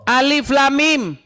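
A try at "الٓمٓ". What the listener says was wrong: Orang baca itu pakai tajwid. Alif tuh enggak panjang. Coba kau baca masa alif kayak gitu.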